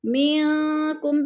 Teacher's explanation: منکم پہ اکفا ہو رہا ہے، نون ساکن کے بعد کاف حروف اکفا میں سے ہے تو ادھر اکفا کریں گے، آواز کو ناک میں چھپا کر پڑھیں گے